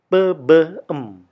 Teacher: bunyi yang diciptakan dengan menggunakan bibir atas dan bibir bawah